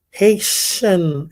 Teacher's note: No, it's more like an SH, like an SH sound, not a CH.